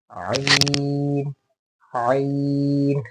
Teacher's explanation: ये जो स्टार्टिंग की जो वॉइस है हलक से, ये निकलना ज़्यादा ज़रूरी है।